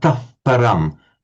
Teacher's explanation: If when you hear Brahmins very carefully reciting the Vedas, for example, this final if it's before a p, it takes on a slight f sound, a tough, not a tah param, but a tough param, almost as if the h is going slightly towards being a f because of the following p. So the p, the labial p sound, attracts the h to being more labial, a tough param. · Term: visarga